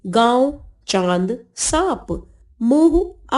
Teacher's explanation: इसका उच्चारण करते समय वायु नाक और मुख दोनों से बाहर निकलती है, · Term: अनुनासिक